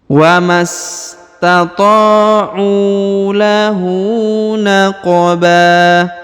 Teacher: Huruf qaf dibaca pantul atau qalqalah karena berharokat sukun